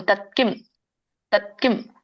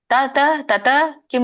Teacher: ವ್ಯಂಜನ ಇದೆ ಅಲ್ಪವಾಗಿ ಹೇಳಬೇಕು ಸ್ವರ ಬರೋದಿಲ್ಲ ತತ್ಕಿಂ ತತ್ಕಿಂ ಅಂದ್ರೆ ಎರಡು ಕೂಡಿಸಬೇಕು ತತ್ಕಿಂ ತತ್ಕಿಂ ತತ ತತ ಕಿಂ ಅಂತ